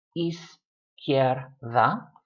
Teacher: The I and the E and the E mush together into one syllable.